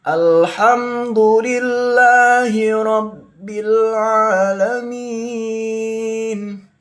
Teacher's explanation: lam sukun termasuk hukum bacaan rakhawah yang tidak dipantulkan membacanya.